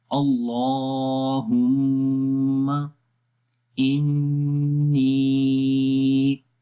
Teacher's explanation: इन 1 second लंबा करेंगे और उसके बाद नी की आवाज़ को लंबा करेंगे क्योंकि यहाँ पर मद्दा है या मद्दा है।